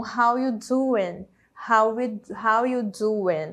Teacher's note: na hora da fala também vai acontecer isso do are perder esse som e a gente fala algo mais parecido com how you do